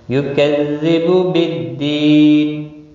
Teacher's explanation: دی یا مدہ ہے، ایک الف کے برابر کھینچ کر پڑھیں گے